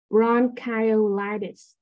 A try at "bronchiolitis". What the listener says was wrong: So you just say bronchitis, but it's actually for this is one of the exceptions. So that is actually pronounced as E, so bronchiolitis.